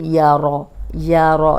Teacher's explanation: رو پہ زبر ہے، رو کو موٹا پڑھیں گے · یا کو موٹا نہیں کریں گے، یورو نہیں پڑھیں گے